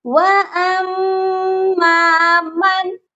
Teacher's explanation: next آیت، وَأَمَّا مَن، ادھر بھی مشدد پر غنہ کریں گے، او نون ساکن پر غنہ بالکل نہیں کریں گے کیونکہ نون ساکن کے بعد حروف ہلکی آ گیا ہے، تو یہاں پر ہم نے اظہار کرنا ہے، صرف نون کو ظاہر کریں گے